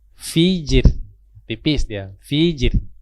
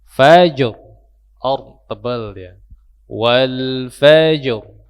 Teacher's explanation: Fajr, mantulkan dulu baru masuk ke huruf ra. Ra-nya dibaca tebal karena huruf fa ya, itu berbaris atas, berbaris fathah ya.